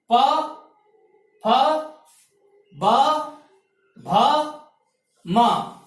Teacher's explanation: और 5वां स्थान है पै वर्ग। इसका उच्चारण स्थान है ओष्ठ स्थान।